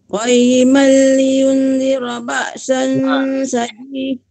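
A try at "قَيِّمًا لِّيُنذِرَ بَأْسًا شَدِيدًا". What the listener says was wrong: Ibu silap yang lain pula. Liyun tu juga panjang dari huruf. Qayyiman liyun panjang dari huruf. Liyunzira.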